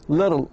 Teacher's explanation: can sound like a quick D sound as in the word little